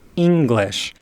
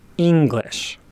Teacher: are many words in english such as the word english that start with a relatively high pitch and then drop again